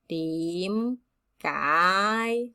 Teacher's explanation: you notice it's two high rising second tone